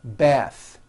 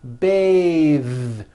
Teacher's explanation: The word bath is a noun with an unvoiced th, bath. But when you change it into a verb, to bathe, the vowel changes to an A sound and the th is voiced.